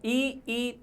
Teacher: ई तालु से उच्चारित हो रहे हैं